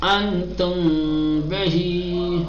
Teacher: ٹھیک، یعنی نہ ادغام کریں گے نہ اظہار کریں گے، بیچ کی آواز سے پڑھیں گے. میم ساکنہ کے اخفا کرنے کا طریقہ یہ ہے کہ پہلے میم کو کھینچ کر غنّے کے ساتھ پڑھا جائے، پھر با کا تلفظ کیا جائے. اور یاد رہے کہ جب میم کو تلفظ کریں تو دونوں ہونٹ آپس میں ملنے نہ پائے.